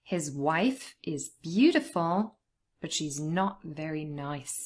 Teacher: it's also important to stress the word not because it's obviously changing the meaning